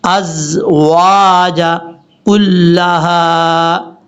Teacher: حمزہ کے بعد جو زا ہے یہ سیٹی کے ساتھ پڑھا جائے گا